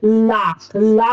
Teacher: जीहा जो है ना वो मसूड़ों को छूती है